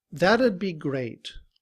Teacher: the T in that sounds like a D